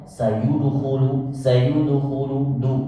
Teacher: ini ulama mengatakan bahwa ini dalnya harus semi zumma, tidak boleh fathah